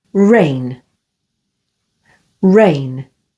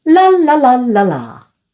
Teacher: For R, the lips are slightly rounded, and for L, the lips are relaxed.